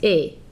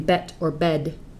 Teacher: The first sound is /e/, not /ɛ/ like in /bɛt/ or /bɛd/. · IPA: /'elokuː/